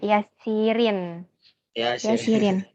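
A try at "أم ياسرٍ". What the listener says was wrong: Ummu Yasirin, bagus.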